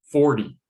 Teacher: t sound can often sound more like a we call it a flap which is a very quick d sound